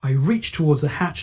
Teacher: that unvoiced affricative ch